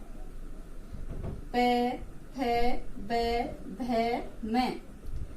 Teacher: तो इसमें सिर्फ होठों का स्पर्श होता है तो इन्हें होठ, इनका उच्चारण स्थान है होठ या ओष्ठ हो गया। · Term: प वर्ग